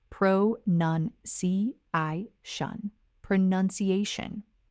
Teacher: It is not pronunciation, it is pronunciation. The middle changes from ounce to nuns.